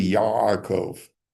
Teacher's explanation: there's a stricture, a closing off in the back of your throat, which to an Ashkenazic ear sounds like the letter N. It's really not the letter N, but it's close to it. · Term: guttural sounds